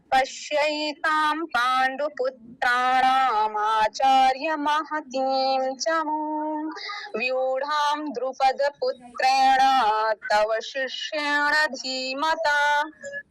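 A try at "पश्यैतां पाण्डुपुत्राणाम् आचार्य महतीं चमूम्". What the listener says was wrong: बहुत सुंदर, लेकिन यहाँ थोड़ा सा गैप देंगे, आपने जैसा लिखा है वैसा का वैसा जोड़ के ही बोल दिया, कहाँ गैप देंगे?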